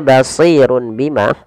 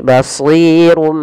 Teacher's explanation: Awalnya basirun bima, karena ketika adanya tanwin bertemu dengan huruf ba, maka tanwinnya dirubah suara nunnya. Awalnya kan basirun dengan nun sukun bunyinya. Nah, sekarang diganti dengan huruf mim. Jadi basirum sambil ditahan, Nah, sebenarnya dalam membaca iqlaq ada dua, tapi kita mengambil yang satu saja, yaitu yang idbaq. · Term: iklab